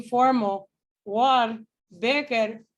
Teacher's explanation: So in New York City English and Scottish English, sometimes there's an intrusive R.